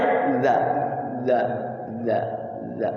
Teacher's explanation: Zal itu sifatnya jahr, tidak hamas, tidak boleh ada anginnya.